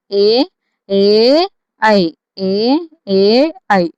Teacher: కంఠ్యతాలవ్య అంటే కంఠము నుండి తాలవ్యము అంటే దవడల నుండి పుట్టినవి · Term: కంఠ తాలవ్యాలు